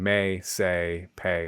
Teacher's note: The tongue starts mid, the jaw's more open, and the vowel moves. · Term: diphthong